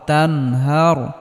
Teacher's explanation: ইজহারের হরফ হা আসার কারণে এখানে নুন সাকিনকে স্পষ্ট করে পড়তে হবে